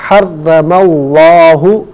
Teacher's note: لفظ اللہ کی لام سے پہلے والے حرف میم پر زبر ہے تو لفظ اللہ کی لام کو پر کر کے پڑھا جائے گا